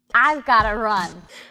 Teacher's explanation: the words I and run stand out I've got to run the words are slightly stretched out longer and they're used with emphasis with a very slight higher pitch · the stress on the words I and run stand out I've got to run the words are slightly stretched out longer